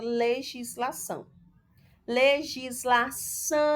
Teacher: você observa que o são é a sílaba tônica é a última sílaba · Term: oxítona